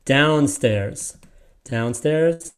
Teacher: they're emphasizing the down to show you that is where the stress is